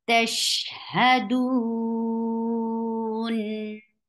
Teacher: Ha is short from your throat, not from your mouth. And 4 counts long.